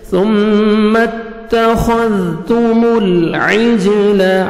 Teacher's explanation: جیم حروف قلقلہ میں سے ڈبل ساؤنڈ آئے گا · خا کو موٹا کر کے پڑھنا ہے